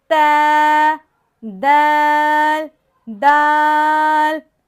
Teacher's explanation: زبان کی نوک کو ہم نے اوپر کے دانتوں کی جڑ سے لگانا ہے تو تا دال قو ادا ہوگا۔